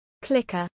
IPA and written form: ˈklɪk.ə (clicker)